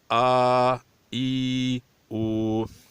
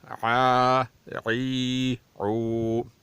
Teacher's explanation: یعنی حمزے کی صفت سخت ہے اور عین کی صفت نرم ہے۔